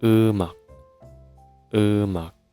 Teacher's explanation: When we pronounce a word and if a syllable ends with a batchim, final consonant, and the next syllable starts with ieung, like this, the batchim takes over the ieung spot. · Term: linking rule